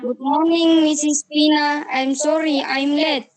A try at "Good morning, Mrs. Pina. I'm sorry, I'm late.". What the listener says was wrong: Iya, very good. Ya, pengucapannya sudah cukup bagus ya. Nanti lebih diperhalus lagi.